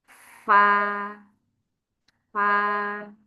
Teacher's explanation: bibir bawah kena ujung gigi seri atas fa